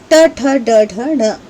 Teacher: ये जो ट वर्ग है वो मूर्धा से बोला जाता है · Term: मूर्धन्य